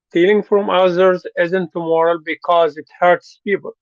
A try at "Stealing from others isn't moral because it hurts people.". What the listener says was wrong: Mm-hmm. Okay. But don't emphasize people.